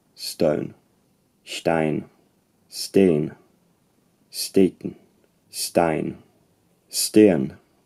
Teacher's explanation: You have a fricative sound, normally s, followed by an unaspirated t, then a vowel or diphthong, then a n sound, except in the case of Icelandic, which has t-n.